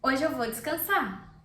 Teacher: As I said before, descansar has an R. I'm not pronouncing the R. It's optional.